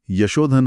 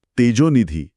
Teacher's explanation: म्हणजे the soft H sound of विसर्गा rounds of into an ओ for ease of speaking. बोलताना जिभेला जास्त कष्ट पडू नयेत म्हणून तो विसर्गाचा उच्चार आपोआप गोल होतो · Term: विसर्ग उकार संधी